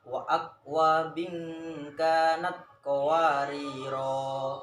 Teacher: jika kita wakaf pada qawariro, ro-nya itu nanti dibaca 2 ketukan ya, jadi matobi'i, maksudnya dibaca 2 ketukan.